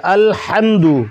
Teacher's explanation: اور یہ ہا کو حلق سے ادا کیا جائے گا